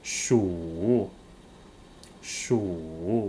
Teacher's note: Remember the third tone, it's very low.